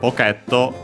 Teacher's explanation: The only difference being the doubling of the consonant unlike English uh the o at the end because the t can stay on its own.